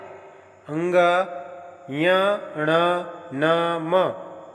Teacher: अंग य, ण, न, म अर्थात प्रत्येक वर्ग का पांचवा वर्ण और अनुस्वार का उच्चारण स्थान नासिका है। नाक से बोले जाने के कारण इन वर्णों को नासिक्य कहा जाता है